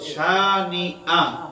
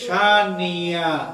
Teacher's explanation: যখন হামজা আর হামজা থাকে না, এটা ইয়া হয়ে যায়।